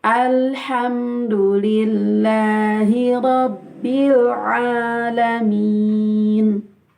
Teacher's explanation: Ain berasal dari tenggorokan, bukan dari hidung.